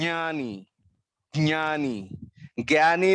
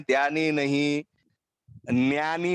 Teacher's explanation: ज और ञ, नाक के माध्यम से ध्वनि निकलनी चाहिए। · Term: अनुनासिक